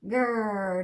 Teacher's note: do you feel it back to your tongue we don't use the front